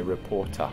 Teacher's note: take the rhotic R out of reporter and say reporter.